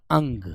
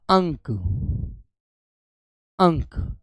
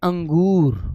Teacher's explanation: इसकी आवाज केवल नाक से आती है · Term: अनुस्वार